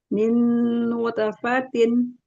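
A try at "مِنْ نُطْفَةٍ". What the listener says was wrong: nuto, tebalkan. Nutofatin. Ya, bukan nute ya. Min nutofatin. Atasin. kayak tapi nggak condong ke harokat fathah ya, lebih cepat ya karena dia pantulan. Min nutofatin.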